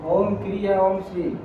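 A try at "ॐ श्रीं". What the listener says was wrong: ओम श्रीम, हाँ श्रीम के ऊपर अनुस्वार होगा, श्रीम होगा, माँ का उच्चारण होगा।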